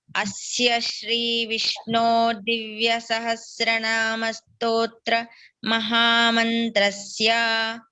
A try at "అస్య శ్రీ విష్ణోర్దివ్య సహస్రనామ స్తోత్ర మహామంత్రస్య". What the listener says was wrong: Correct. Good.